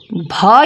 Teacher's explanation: भ यहां पर स्पर्श घोष महाप्राण ओष व्यंजन ध्वनि है